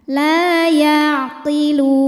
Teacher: Jadi kalau berhenti panjang, lamnya boleh 2, boleh 4 atau 6 harokat asal konsisten dalam sekali bacaan. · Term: mad arid li sukun